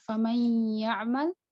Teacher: untuk yang bertemu dengan ya, nun sukun bertemu dengan ya, itu nakis, dari tidak sempurna.